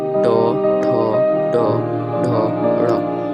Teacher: इनका उच्चारण स्थान होता है मूर्ध। मूर्ध से हवा टकरा कर निकलती है। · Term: ट वर्ग